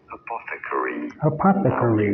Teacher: you want to stress on the second syllable